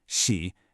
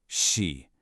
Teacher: has a dipping tone. It goes down, then back up.